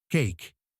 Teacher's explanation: El fonema en la palabra cake es un diptongo, lo que significa que hay una transición suave entre dos sonidos vocálicos. En este caso, es similar a decir ey en español, como en la palabra ley.